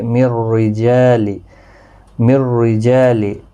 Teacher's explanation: را زیر کی وجہ سے باریک پڑھا جائے گا